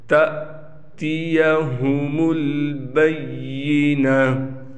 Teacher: یہ حمزہ ہے، الف نہیں ہے، لہٰذا یہاں تھوڑا حمزہ کو جھٹکا دے کر پڑھیں گے · گولتا وقف کی حالت میں ہا بن جاتی ہے